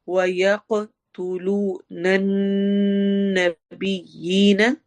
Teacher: یک میں قاف میں اگین ایکو ساؤنڈ ہوگی، کلکلا ہوگا